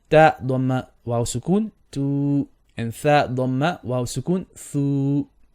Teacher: when you have a dhamma and then you have a waw with a sukoon, that will also turn it into a long vowel. 2 beats.